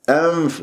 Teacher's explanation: ولا أطبق الشفاه ولا أخنقها الغنة حتى لا تصير ميم، فرجة بين الشفتين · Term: إخفاء